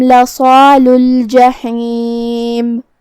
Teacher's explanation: आखिरी में मीम पे रुकेंगे तो उस पे जज़म से रुकेंगे तो हमें मीम को ज़ाहिर करना है